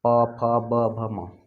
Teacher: ठीक है, प वर्ग का देखिए, प फ ब भ म, इसको तो आप बता ही सकते हैं कहाँ से उच्चारण हो रहा है, तो आप कहेंगे ओष्ठ के सहायता से। यदि हम लोग दोनों ओठ को नहीं मिलाएंगे, नहीं सटाएंगे तो नहीं बोल पाएंगे